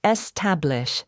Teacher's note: Stress on middle syllable. Common mistake. Don't stress the first syllable